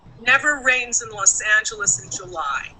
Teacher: we stress the word never which is a negative · So the words I did not stress were the pronoun at the beginning, the word it, and the preposition in. Okay? Those words were said lower and not so clearly. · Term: unstressed